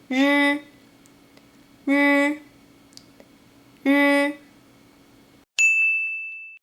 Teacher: 诗, 诗, 诗. The final one is the same as in 诗, but you need to vibrate your vocal cords.